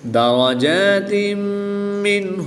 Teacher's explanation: دو زیر کی تنوین کے بعد میم حروف ینملون میں سے ہے تو یہاں پر ادغام مع الغنہ ہوگا. نون ساکن کے بعد ہا حروف حلقی میں سے ہے تو یہاں پر اظہار ہوگا، یعنی نون ساکن کو خوب ظاہر کر کے پڑھیں گے، غنہ نہیں کریں گے.